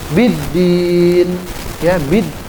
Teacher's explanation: Contohnya ini, biddin, ya, bid. Itu kan alnya nggak kedengeran tuh, nggak ada huruf L, nggak ada huruf lam. Seperti ar-rahman, ar-rahim, ya itu, wasyamsi, itu kan, wadduha, itu kan ada alnya semua tuh tulisannya. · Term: al-syamsiyah